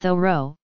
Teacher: with the H sounded and stress on the first syllable